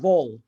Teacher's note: as you say vol uh make sure that the tip of your tongue touches the inside of your upper front teeth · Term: hard l